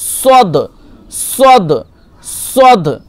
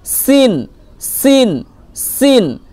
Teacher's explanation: পার্থক্য হচ্ছে এইটা আপনি পুর করবেন, মানে যখন সদ বলবেন মুখটা একটু গোল করবেন